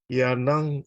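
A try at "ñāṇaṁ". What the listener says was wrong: yana, nya. Nya. Can you pronounce panya? The same thing. Nyanang. So just take out P, PA, then nyanang. Not yanang. Nya, nya, nya.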